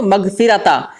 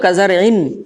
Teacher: नून सुकून आपको पढ़ना है, अंशकार की तरह, एन की तरह एक आवाज़ निकालना है